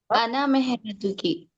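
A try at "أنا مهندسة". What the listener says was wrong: नहीं, आना मेहनतु नहीं है, आना मुहंदिसतुन। बोलिए, आखिरी में गोलता लगाना। औरत के लिए क्या लगता, आखिरी में गोलता लगता, क्या लगता, गोलता। मुहंदिसुन से मुहंदिसतुन।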